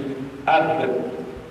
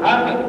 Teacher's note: Bila kita sebut ab, secara automatik kita tahu makhraj huruf ba adalah di bibir.